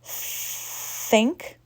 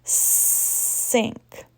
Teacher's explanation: For the S sound, notice how your tongue rises. It's towards the top row of teeth. It is not sticking out of your mouth.